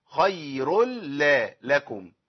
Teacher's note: مش هسمع صوت نون واسمع صوت الحرف اللي بعد التنوين مرتين. خير ال، ادي لام اهي، خير ال لا لكم، يبقى لازم ابين دي اللامين.